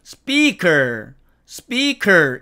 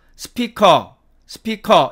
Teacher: 원래의 영어에 가끔 있는 길게 발음해주는 부분을 무시하고 각 음절을 동일한 길이로 짧게 발음을 합니다